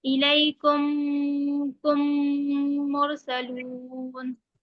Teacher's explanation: अब देखिए पहला वाला, पहली पहली वाली जो डेफिनेशन है इदगाम शफवी, क्या है उसमें, उसका कायदा क्या है कि मीम साकिन के बाद मीम आए तो मीम को मीम से मिलाकर गुन्ना के साथ पढ़ा जाएगा। ये इदगाम शफवी है।